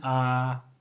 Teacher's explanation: इनका उच्चारण में हर स्वर की अपेक्षा समय थोड़ा दुगना लगता है, इसीलिए इन्हें दीर्घ बोलते हैं। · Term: दीर्घ स्वर